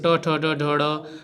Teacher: ट वर्ग मूर्धन्य हैं, ये मूर्धा का स्पर्श करते हैं।